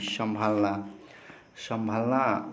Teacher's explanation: संभालना जो है इसका उच्चारण किससे हो रहा है मुख और नाक से हो रहा है इसलिए संभालना जो है अनुनासिक है